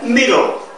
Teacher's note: 하나만 발음하는데 그 하나는 우리말의 받침처럼 발음하고서 넘어가는 게 middle